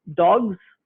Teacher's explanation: So over here you have dogs, the plural morpheme is za. It remains za when it occurs with voiced sounds. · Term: assimilation of voice